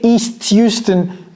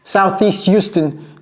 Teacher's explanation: vous voyez le T, East Houston, donc là, elle a fait une liaison Southeast Houston